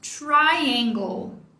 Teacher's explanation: A primeira sílaba é a tônica, então o tracinho tá aqui para nos mostrar isso. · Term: sílaba mais forte